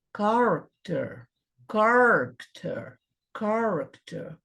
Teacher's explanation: Chua, que é um E de cabeça para baixo, é quando a vogal ela é pronunciada de uma forma muito leve. A língua em repouso, e às vezes baixa e às vezes não é pronunciada.